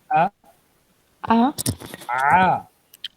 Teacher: गले से जो आवाज़ें निकल रही हैं आ, ये आइन की आवाज़ है।